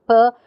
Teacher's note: it has the features voiceless and it's bilabial, it's a stop or an obstruent.